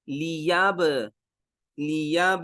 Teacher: با کے اوپر جزم آ گئی، تو یہاں پہ قلقلہ ہوگا، آواز لوٹ کے آئے گی